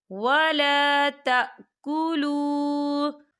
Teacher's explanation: وَلَا تَأْكُلُوا، دیکھیں وَلَا تَأْكُلُوا، یہاں پر واو ساکن ہے اور واو ساکن سے پہلے پیش ہے، تو یہاں پر واو مدہ بھی ہو رہا ہے اور اس پر چھوٹی سی مد بھی ہے، تو ہم اسے 4 حرکت کے برابر کھینچ کے پڑھیں گے